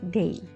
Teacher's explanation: and day is pronounced as day so we have a Glide from a to e